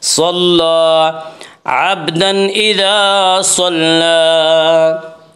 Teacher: صاد کو پر پڑھیں گے، صاد حروف مستعلیہ میں سے ہے، حروف مستعلیہ 7 ہیں جن کا مجموعہ خصہ ضغط قز ہے، یعنی خا، صاد، ضاد، غین، طا، قاف، ذا، یہ 7 حروف مستعلیہ کہا جاتا ہے، اور یہ ہمیشہ ہر حال میں پر پڑھی جاتے ہیں۔